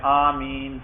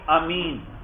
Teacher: مد سے مراد یہ ہے آمین کے الف کو لمبا کرنا